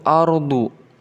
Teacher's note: Kemudian setelah itu ardu. Di sini ada ra yang diharokati dengan sukun bertemu dengan salah satu huruf jawazul wajhain, yaitu dad, maka dihukumi sebagai jawazul wajhain. Artinya boleh dibaca tafkhim, boleh juga dibaca tarqiq